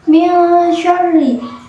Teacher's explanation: nun sukun dibunyikan dengan samar-samar sambil berdengung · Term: ikhfa